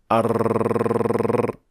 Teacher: air pushes the entire tip of the tongue to escape and with pressure already applied on the tongue it causes the tongue to go back and forth several times which then gives us the sound and this exaggerated form of